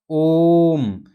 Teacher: ओम क्या है, ओम का जब हम उच्चारण करेंगे तो कैसे होगा, ओम, यानी दीर्घ स्वर की अपेक्षा ज़्यादा समय लग रहा है, यानी तिगुना समय लग रहा है, तो ऐसे स्वर जो है प्लुत स्वर कहलाते हैं।